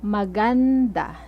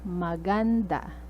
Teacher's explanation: notice the stress is on the second syllable